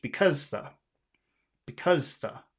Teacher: And so we have b, which is small, and cuz, which is big, and then you have the, which is small